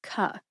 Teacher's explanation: It's almost like the letter K has an apostrophe after it, or you have a K with a super short E after it. It makes a K sound.